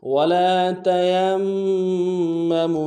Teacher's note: من الارض ولا تیمموا، واو کو نون سے ادا کریں گے، لام کے ساتھ الف مدہ ہے، ایک الف مقدار میں کھینچیں گے